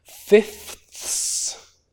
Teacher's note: with three voiceless fricatives at the end · lose the second f entirely. So you get rid of that second f. · With 3 voiceless fricatives at the end. But in fact, the way most people usually pronounce that, they would say something like, we're dividing it up into fifths, and lose the second f entirely.